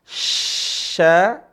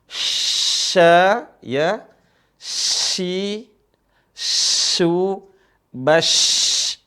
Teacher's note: huruf syin syin itu Tengah lisan ketemu dengan langit-langit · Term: huruf shin